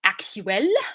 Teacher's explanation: again pointing out the differences between the pairs so actual so the l at the end isn't like a strong full l it's kind of like an l vowel flavor and actual in english is ending really on that l actual